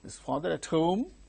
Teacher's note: Because it is a question, yes no question, which begins with a helping verb. The tone used is rising tone.